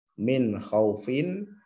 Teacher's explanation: untuk panjangnya ini yang membedakan adalah boleh satu boleh dua atau tiga Alif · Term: mad lin